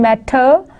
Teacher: You would see there is the flapping of t in the American English.